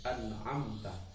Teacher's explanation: Izhar syafawi harus dibaca yang terang di bibir dengan mulut tertutup. Contoh an'amta, mim sukun bertemu ta, bacanya jelas an'amta.